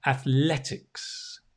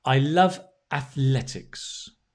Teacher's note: you stress the le